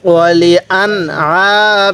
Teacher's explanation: এই নুন সাকিনের মধ্যে স্পষ্ট করে পড়ব, কারণ নুন সাকিনের পরে আইনটি হলো ইজহারের হরফ, যার কারণে এই নুন সাকিনটা স্পষ্ট করে পড়তে হবে।